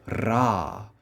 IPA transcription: ɾ